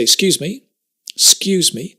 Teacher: me we don't say that we say excuse me excuse me the ek disappears we drop it